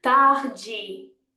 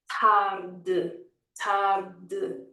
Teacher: when we have a word ending in an E, we want to close down that E. It's going to be tarde, tarde, okay?